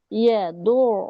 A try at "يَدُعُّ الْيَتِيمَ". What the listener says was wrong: يدع اليتيم ইয়া টান হবে না ইয়াতিম